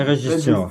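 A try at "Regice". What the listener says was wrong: Il y a Ice à la fin. ICE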